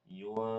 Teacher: Nun sukun ketemu fa. Hukumnya adalah ikhfa hakiki, samar. Jadi bacanya yunfiqun.